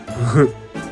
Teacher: It's uh huh like H, but voiced H.